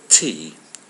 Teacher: when you say t your tongue hits the back of your top teeth